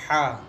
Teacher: وسط حلق سے نکلتا ہے، ہا، وسط حلق سے جسے گلا بھی کہتے ہیں آپ لوگ، یہاں سے ہا نکلتا ہے۔